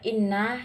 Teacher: inna yang termasuk dalam gunah musyahadah karena ada huruf nun yang bertasdid. Cara membacanya mendengung yang disangatkan.